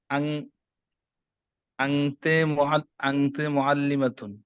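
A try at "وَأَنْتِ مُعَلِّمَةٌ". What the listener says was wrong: ওয়া আনতে না, ওয়া আনতি, ওয়া আনতি, ওয়া আনতি মুআল্লিমাতুন।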